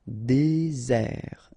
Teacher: Désert, okay, remember, final T not pronounced, désert, and really this z sound just because you get one S between the two vowels